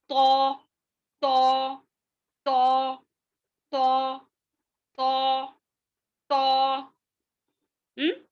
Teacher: तो की आवाज मोटी और झटकेदार होती है